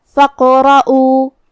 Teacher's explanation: جو کہ را پہ زبر ہے تو را کا حکم ہے تفخیم، ہمیں را کو موٹی آواز میں پڑھنا ہے · کلمت فقرؤ میں یہاں الف ہے، لیکن یہ حمزۃ وصل ہے تو ہم حمزہ کو ظاہر نہیں کریں گے، فا کے بعد حرف القاف پڑھیں گے، جو کہ قاف پہ جزم ہے، تو یہاں قاف کو ہمیں قلقلہ سے پڑھنا ہے، مطلب ہم قاف کو ہلاتے ہوئے یہ کلمہ کو پڑھیں گے